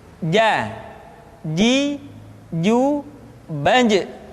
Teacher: Padahal kalau kita melihat sifat yang dimiliki huruf ja, dia tidak boleh mengalir nafas karena sifatnya al-jahr, lawan dari al-hamas